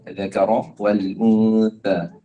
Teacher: Saya dengar desiran pada huruf dzal dan huruf tha. Kita tak nak desiran, kita nak ذَكَرَ وَالْأُنْثَى. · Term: huruf zal